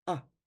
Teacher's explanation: the single letter a is a very short ah